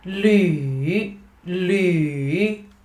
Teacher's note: And focus on the third tone. Falling, rising, right?